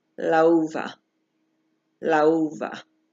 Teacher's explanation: Lau is one word, it's one syllable, and va is the second syllable. La uva. And I'm saying a V because I've been going through some pronunciation training, but it's actually la uva. · the last letter of the first word and the first letter of the second word are distinct or different vowels. And then you're gonna pronounce that like a diphthong